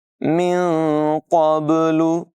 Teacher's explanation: قاف کی آواز پر ہوگی، با میں قلقلہ ہوگا